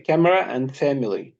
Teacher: so be careful because the vowels are deleted